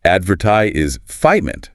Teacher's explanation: The stress is on the second syllable, vert.